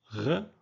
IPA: ʁ